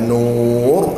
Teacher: Sebab apa mesti kena tebal ra tersebut? Disebabkan ada huruf wau mad. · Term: ra tebal